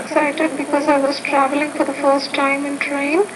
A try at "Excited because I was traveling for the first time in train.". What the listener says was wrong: Now with your intonation, I have good and bad news. The good news is you are varying your intonation, which is a good thing. However, when you get to the end of each sentence that you're saying, you're kind of ending with a rising tone.